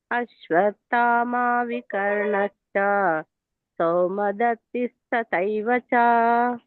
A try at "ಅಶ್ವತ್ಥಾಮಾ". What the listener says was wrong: ಅಶ್ವತ್ಥಾಮ ಅಶ್ವತ್ಥಾಮ ದೊಡ್ಡದಿದೆ.